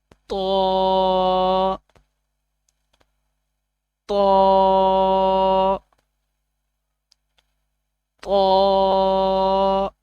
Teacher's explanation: زبان کی نوک اوپر والے دانتوں کی جڑوں سے لگے تو طا ادا ہوتا ہے